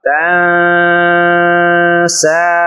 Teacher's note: تن، سین کھڑی زبر سا، تن سا، نون ساکن ہے اور نون ساکن کے بعد حروف اخفا میں سے سین آ رہا ہے تو اس لیے یہاں پر اخفا ہوگا یعنی غنہ ہوگا